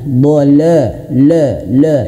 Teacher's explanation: Jangan sampai huruf dhad ini tebal dan huruf lam yang tipis terbawa menjadi tebal.